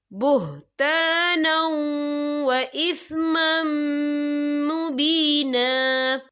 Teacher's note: اور آگے دیکھیں وَإِثْمًا، میم کے پر تنوین ہے، تنوین کے بعد جو ہے میم آ رہا ہے، اور میم جو ہے حروف یرملون میں سے ہے، تو یہاں پر ادغام ہوگا، تو ہم اسے غنّے کے ساتھ پڑھیں گے